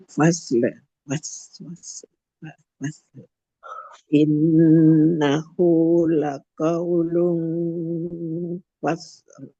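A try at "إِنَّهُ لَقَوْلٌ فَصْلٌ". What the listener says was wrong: L-nya masih belum terlalu kedengeran. False. Yang penting nanti dulu, yang penting L-nya jelas.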